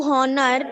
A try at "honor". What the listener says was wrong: honor नहीं बोलते. Honor नहीं बोलते. To honor. H is silent. Honor.